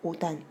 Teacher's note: 이 경우에는 옷에 시옷이 음절 끝에 시옷이 7개의 자음 중 하나인 디귿으로 바뀐 다음에 연음되어서 오단 이렇게 발음하는 겁니다